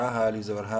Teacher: الف مدہ ہے، ہا کو ایک الف برابر لمبا کریں گے